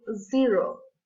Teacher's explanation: The tip of the tongue touches the crust of the teeth. It's the same sound of S in Spanish, with variation of the vocal cords. For example, zero.